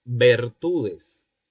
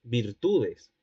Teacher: Y en este caso están vacilando las dos vocales pertenecientes a la serie anterior. El hablante prefirió emplear, o empleó, mejor dicho, la semicerrada anterior en lugar de la cerrada anterior. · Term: vacilación de vocales átonas